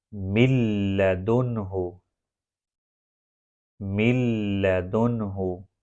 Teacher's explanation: جب لام نون سکون کے بعد آئے تو اس کی مثال من لدنہ، من لدنہ۔ کوئی ناک سے آواز نہیں آ رہی تو یہاں پر ادغام وداؤٹ غنہ ہوا، من لدنہ۔ اس کو لکھا جاتا ہے من لدنہ، نون سکون کے بعد لام آ گیا، نون سکون کو لام میں داخل کیا گیا تو پھر اس کے بعد پڑھا جائے گا من لدنہ، من لدنہ۔